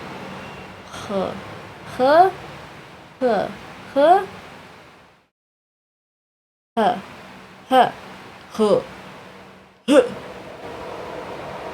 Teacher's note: H is slightly more guttural or aspirated. More like the German CH and ach